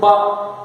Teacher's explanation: मैं अगर बोलूं बा, तो बा में मेरे दोनों होंठ, लिप्स, ये टच करते हैं, हेल्प लेते हैं, तब ये साउंड होते हैं। तो इसीलिए मैं इसको बोलूंगा ये एक कंसोनेंटल साउंड है।